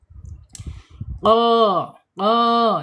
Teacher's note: QF ada di makhraj pangkal lidah ya